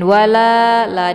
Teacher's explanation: dibaca panjang dua harakat. Mad thobi'i zahiri. Kemudian humyu.